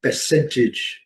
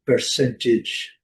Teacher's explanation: No inglês britânico, o R não é pronunciado